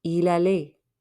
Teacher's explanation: Don't pronounce the T at the end.